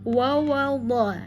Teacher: Pastikan harus membedakan huruf yang tipis dengan yang tebal. Wawal dha ya, karena pada dha itu tebal ya.